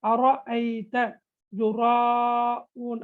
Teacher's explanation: ராவுக்கு ஃபத்ஹா வந்திருக்குது. எனவே தஃபீமு ரா, ரைட், ராவை வல்லினமாக ஓத வேண்டும்.